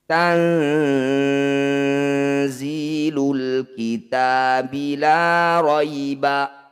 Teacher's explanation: Tanzilu, ada nun sukun bertemu za atau zaih, disebut bacaan ikhfa awsat. Cara bacanya bunyi nun sukun ini dengungkan 2 harokat. Ketika dengung atau ditahan, lisan kita sudah ada di huruf za, bersiap bunyikan huruf zaih.